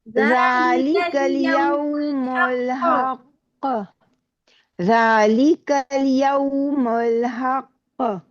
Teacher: ذرا زور سے دبا کے قاف کو کلکلا کیجیے